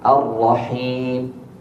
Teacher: مد العارض للسكون يجوز لنا فيه حركتين وأربع وست. الرحيم حركتين، الرحيم أربع، Empat.